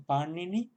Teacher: la primera n es retrofleja y la segunda es una n dental normal como en castellano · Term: n retrofleja